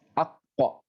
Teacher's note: Jadi dia pertama ucap ak, naik ke atas dulu, pangkal lidahnya, kemudian menjauhi cepat. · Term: qalqalah